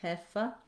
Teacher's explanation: Again, you'll see here I put it as Hefe because in German they won't use the diphthong. They'll just have the one E sound, Hefe. Then we'll have the schwa.